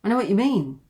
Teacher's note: Comes down at the end, and this shows empathy.